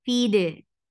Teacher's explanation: Attached with dal. Dal will get qalqala.